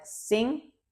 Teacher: pronunciation differences appear in words containing the th sound. So, think might sound like sing.